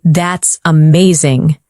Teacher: When you say, That's amazing, your tone rises with excitement. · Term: rising tone